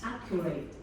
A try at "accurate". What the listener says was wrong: Accurate. Accurate. Because you're saying accurate, and it's accent at the beginning. Accurate.